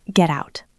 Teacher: Again, make the T very soft. Just a tap of the tongue. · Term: flap t